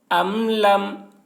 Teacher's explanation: میم ساکن کے بعد با اور میم کے علاوہ حرف تا آ رہا ہے، اس وجہ سے میم کو ظاہر کر کے پڑھیں گے، اس کو اظہار شفوی کہتے ہیں۔